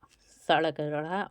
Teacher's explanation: ये मूर्धन्य उत्क्षिप्त ध्वनियां इन्हें बोलते हैं उत्क्षिप्त ध्वनियां